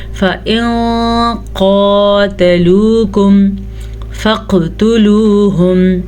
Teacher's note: پھر سے نون ساکن کے بعد قاف ہے تو نون ساکن کو چھپائیں گے, غنے کے ساتھ چھپائیں گے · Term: اخفا